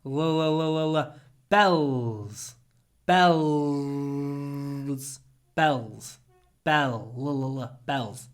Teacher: When you say bells, try to use dark l. Tip of your tongue down.